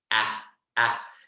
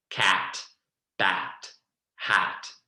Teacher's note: that ah sound is very bright, ah, ah, and it's almost just a release of the vocal, ah, ah, and you'll see that I'm spreading a lot for that. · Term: short ah sound